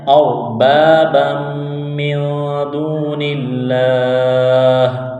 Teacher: ہے، غنہ نہیں کریں گے، آواز ناک میں نہیں چھپائیں گے، را ساکن سے پہلے زبر ہے تو را کو موٹا کرنا ہے